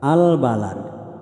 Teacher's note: Al-qamariyah artinya jelas ya, bunyi alnya jelas. Karena alif lam bertemu dengan salah satu huruf al-qamariyah yakni ba, maka alnya berbunyi jelas terangnya.